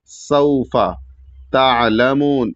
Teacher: सीन को सीटी के आवाज की तरह अदा करेंगे और सीन के बाद वाव साकिन है तो एक अलिफ के र खींच के पढ़ेंगे सऊफा तालमून यहां पर भी ध्यान देना है कि यहां पर ता के बाद ऐन है और ऐन साकिन है।